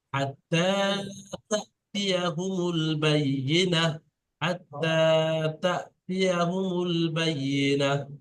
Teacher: শুধু তাটা একাধিক পরিমাণ টান